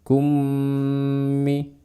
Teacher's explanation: Kummi ya, itu disebut dengan idghamun mimi, yaitu saat mim mati bertemu dengan mim, dibaca dengan gunnah yang panjang